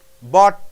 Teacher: your tongue is in the position for T but you keep the air in